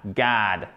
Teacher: C'est avec le bas en American English, avec le bas de la bouche et c'est plus vers la gorge.